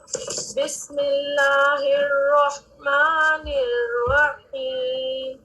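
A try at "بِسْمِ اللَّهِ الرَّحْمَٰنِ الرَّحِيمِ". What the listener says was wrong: بسم اللہ الرحمن الرحیم. تو اس میں جو ہا ہے اس میں آپ کو کیا لگ رہا ہے کہ آواز سانس رک رہی ہے یا سانس جاری رہ رہی ہے؟ جاری. آپ محسوس کر رہی ہیں اس کو؟ الرحمن. تو اس کو اور واضح کیجیے. جب آپ اس کو ادا کر رہی ہیں تو اس کو واضح کیجیے کہ اس میں آپ کی سانس ہم سے اس میں جاری رہے.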